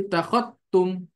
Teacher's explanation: Ya, membaca idgham zal dengan memasukkan langsung ke ta, idgham kamilan. Artinya zalnya ini langsung didghamkan ke ta.